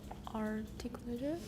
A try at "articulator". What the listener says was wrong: I don't hear the U in there.